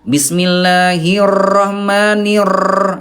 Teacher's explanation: itu huruf ro-nya terlalu bergetar